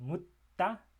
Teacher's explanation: that T there is kind of lengthened in terms of the length of that pause, or the stop. If we're calling it what it is, it's a stop.